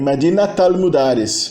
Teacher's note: Embora na ortografia isso não seja mostrado, na pronúncia, o tamarbuta volta a ser pronunciado como at. O T final do tamarbuta volta a ser pronunciado quando ela é seguida de uma palavra que é um complemento idafa, um complemento genitivo.